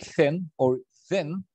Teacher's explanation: Okay, so if you try to pronounce if or the, like thin or thin, you will see that the tip of the tongue articulates with the upper teeth. So here we have the obstruction. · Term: Dental sounds